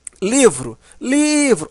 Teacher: Observa que o li é a sílaba mais forte.